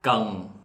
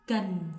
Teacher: For the ending N, the Northerner pronounce very different from the South, so they distinguish the N and NG. But for the Southerners, most of them, they change to NG for the N.